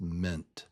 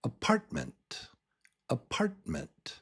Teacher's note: You can barely even hear the vowel in ment. It's just ment.